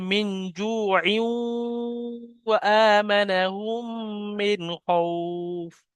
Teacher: ওয়াবের কথা আছে, তানবিনের পরে ওয়াব এসছে, এটা ঈদগামে নাকিস, অর্থাৎ তানবিনকে ওয়াবের সাথে মিলিয়ে একালি পরিমাণ গুণনা করে পড়তে হবে।